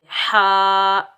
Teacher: اس ہا کو ہم حلق کے درمیان سے ادا کریں گے